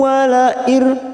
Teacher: nun sukun bertemu ro, namanya bacaan idgham bila guna, hanya masuk tanpa ditekan lama-lama